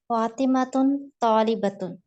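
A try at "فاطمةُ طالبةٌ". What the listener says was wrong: नहीं, तुम नहीं है। आप उसकी जो हम्म हर का आप सही से पढ़ें।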